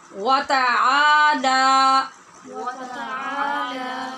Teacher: عین الف آ اور لام الف لا یہ دونوں لمبے کرنے ہیں